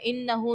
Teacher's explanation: انہو نون مشدد ہے، غنہ کریں گے. ہا کے اوپر الٹا پیش ہے، تو یہاں پر آپ اس کو ایک الف کی مقدار کھینچو گے. الف سے پہلے زبر ہے، الف مدہ.